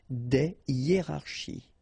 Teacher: so you don't make the liaison between the two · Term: H, aspiré